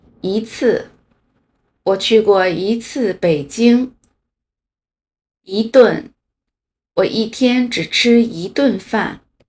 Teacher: 如果一的后边是四声的话，会变成二声